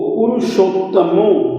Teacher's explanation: ये अ और उ मिलकर के हो जाएगा ओ